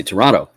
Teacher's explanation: The T in the middle turns into a D sound.